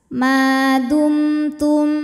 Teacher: karena mim sukun menghadapi huruf Ta Maka mim dibaca jelas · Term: izhar syafawi